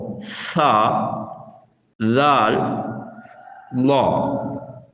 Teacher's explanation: இந்த 3 எழுத்துக்களும் நாவின் நுனி மேல்முன் பற்களின் நுனியில் படும்போது வெளியாகும்.